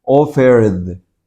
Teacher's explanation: Entonces, esta ed se pronuncia como una D. Offered. La D todavía tiene sonido.